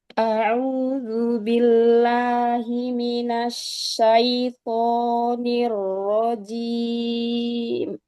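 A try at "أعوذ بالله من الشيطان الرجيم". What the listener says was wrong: Huruf ainnya fokuskan lagi. A'udzu. Hamzah di awal ringankan dulu. Kayak A biasa. A, A. A'udzu. Hamzah dengan ainnya. Billahi. Turunkan, jangan billah, la naik. Lahi.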